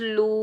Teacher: वाव मद्दा को भी हम एक अलिफ की मिकदार में खींच कर अदा करेंगे। जब भी वाव साकिन से पहले पेश आ जाए तो ये होता है वाव मद्दा, इसको हमने एक अलिफ की मिकदार में खींच कर अदा करना है, ठीक है।